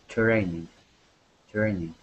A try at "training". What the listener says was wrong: Good, good. Nice job.